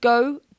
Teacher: If we, just say the word go, it wants to go on that diphthong straight away.